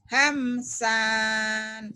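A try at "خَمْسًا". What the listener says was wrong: Hamsan. Nggak ada panjang. Hamsan.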